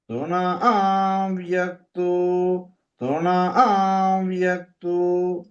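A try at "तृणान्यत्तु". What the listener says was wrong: తృణాన్య ఎన్ను పెట్టి చెప్పాలి, నకారం చెప్పాలి. తృణాన్యత్తు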